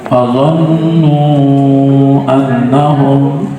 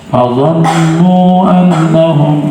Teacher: Fazon dibaca panjang, waw ya, azannu waw sukun ya, sebelumnya baris dhammah panjang 2 harokat, tapi karena ada hamzah setelahnya fazannu annahum, maka pembacanya mad jaiz, boleh 2, boleh 4, boleh 5. Fazannu annahum itu yang 5 harokat.